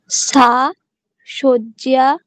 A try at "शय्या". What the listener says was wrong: শয্যা নয়, আজকেই পড়ানো হয়েছে। জ নয়, সেটা কি? ঠিক, শయ్যা। সা শయ్যা।